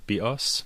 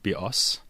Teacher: the word BOS with the stress on the second syllable means bow